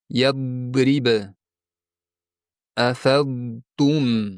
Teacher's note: siz bosimni til yonlariga emas, balki til uchiga berib bosgansiz. Yaʼni dod oʻrniga dal tovushini aytgansiz. Bunday holatda tovish quyydagicha eshitiladi.